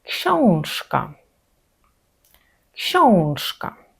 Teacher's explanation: Так, це саме о, а не а. І окрім того ще й носове, тому вимовляємо вніс. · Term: Назальний звук